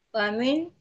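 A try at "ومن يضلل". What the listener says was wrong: Bukan wamin, bukan huruf jar ya. Bukan huruf jar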